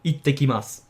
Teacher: notice how the s sound at the end, just like with ohayo gozaimasu, is not really pronounced.